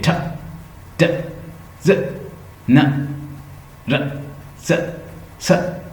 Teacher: tip of the tongue फौरन अल्विलर ridge के ऊपर टकराएगी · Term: अल्विलर साउंड